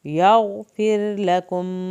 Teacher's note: अनिअबुदुल्लाह वत्तक़ूहु वअतिऊन यग़फिर लकुम, यहाँ पर गैन फिर लकुम, रा पतला पड़ा जाएगा